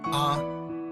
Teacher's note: The first tone is high in level, A. It is important to keep one's voice even, almost monotone, across the whole syllable when pronouncing the first tone.